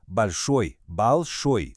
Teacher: Grande a gente já conhece, большой, большой, com a força no final.